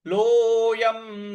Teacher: ल पर जो ओ की मात्रा है उसको दीर्घ खींचना है